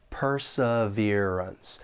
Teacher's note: syllables and the stress is on that third syllable perseverance and the second and fourth syllable have that unstressed schw W sound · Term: unstressed schwa sound